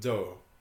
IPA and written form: dɔː (door)